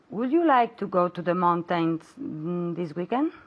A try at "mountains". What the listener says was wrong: Mountains. Okay, even though it has the I and the A, we don't say ain, we say in mountain.